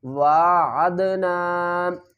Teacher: دال ساکن ہے اور دال کو ہلا کر پڑھیں گے، یعنی اس کے اوپر ہم قلقلہ کریں گے۔